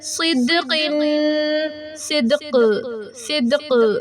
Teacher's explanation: دال قلقلہ کا حرف ہے اور اس پہ ساکن بھی ہے، ہم اس پہ قلقلہ کریں گے، اسٹرانگ قلقلہ ہوگا